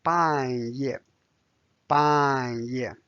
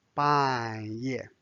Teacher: 半 fourth tone. 夜 fourth tone. Both are falling tones.